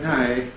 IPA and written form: næɪ (know)